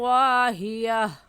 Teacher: گولتا وقف کی صورت میں ہا بن جاتی ہے، تو ہا پڑھیں گے